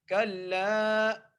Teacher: لام کو ایک الف مقدار کھینچ کے پڑھیں گے